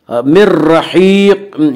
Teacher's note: या मद्दा वो या जो साकिन उससे पहले ज़ेर हो, या मद्दा को नरम आवाज़ के साथ पढ़ेंगे। मिर रहीक़, या मद्दा को एक अलिफ के बराबर खींच कर पढ़ेंगे